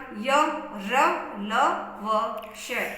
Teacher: अब अंतस्थ व्यंजन, इन व्यंजनों का उच्चारण स्वर एवं व्यंजनों के बीच का सा होने के कारण इन्हें अंतस्थ व्यंजन कहते हैं। इन व्यंजनों का उच्चारण करते समय जीभ मुंह के किसी भी भाग से पूरी तरह स्पर्श नहीं करती है।